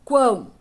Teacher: esse U aqui quase nem aparece no som. Então, ele é uma semivogal